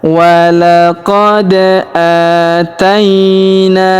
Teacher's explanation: Aaina huruf ta kita ayun sekali karena di depannya terdapat ya sukun. Huruf na kita panjangkan dua harakat karena terdapat alif di depannya.